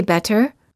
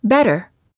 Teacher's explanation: sounds like a fast D sound when it's between two vowels when a t is between two vowels it's generally pronounced like a fast D sound · The T sounds like a fast D sound when it's between two vowels.